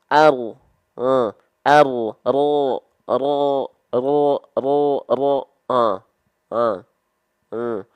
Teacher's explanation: dia dilafalkan bukan betul-betul dari ujung lidah tapi dari punggung lidah kita ya pengucapan kayak orang cadel ya boleh mau dianggap kayak